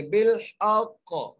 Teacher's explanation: قاف کو قلقلہ کرتے ہوئے